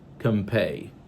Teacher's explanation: so it is nasal like the n and it is bilabial like the p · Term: bilabial nasal